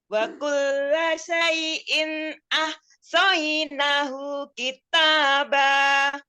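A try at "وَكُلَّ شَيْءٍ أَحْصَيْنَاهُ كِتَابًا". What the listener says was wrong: Ini kebalik ya, nanya yang panjang. Nahu.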